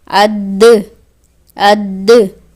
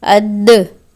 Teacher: जब हम अद कह रहे हैं तो ये हुर्फ आधा हुआ है, लेकिन अद जब द कर रहे हैं तो इसमें कलकला हो रहा है और हुर्फ मुकम्मल अदा हो रहा है।